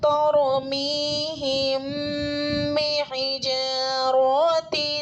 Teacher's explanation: میم ساکن کے بعد با آ رہا ہے تو غنہ کے ساتھ اخفاء ہوگا یعنی اخفاء شفوی ہوگا. با متحرک ہے, میم متحرک ہے, حمزہ ساکنہ میں ایک جھٹکا سا ہوتا ہے.